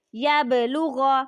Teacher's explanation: اب با کی مثال ہے یبلغ۔ یہ دیکھیں یہ با ہے اور اس کے اوپر ساکن ہے، تو اس پہ ہم قلقلہ کریں